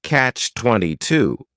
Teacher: is Catch 22 this is two words it's a compound noun the word catch is just one syllable and then 22 is three syllables and the stress is on that final syllable